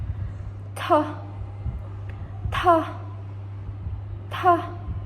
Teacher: by using the tip of the tongue touch the alveolar ridge